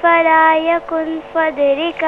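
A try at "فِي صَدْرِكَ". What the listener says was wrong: فی صدرک. آپ نے باقی تو صحیح پڑھا لیکن آپ نے تمام وہ حروف کے جن پر زبر یا زیر یا پیش ہے آپ نے کھینچ کر پڑھا.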